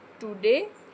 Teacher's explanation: in the word today, day is stressed and to is unstressed. यहाँ पे ये जो आपका टुडे वर्ड है इसमें जो डे है ये इस पे पूरा फोकस किया जा रहा है, इसलिए ये स्ट्रेस्ड वर्ड है.